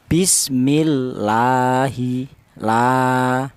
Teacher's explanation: Ini dibaca mad thobi'i. Dibaca panjangnya satu alif atau dua harakat atau dua ketukan ya. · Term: matobi'i